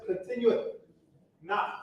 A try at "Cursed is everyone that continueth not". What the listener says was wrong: Yeah, don't pause. There's no comma there. Does it say cursed is everyone that continues? That's what it says.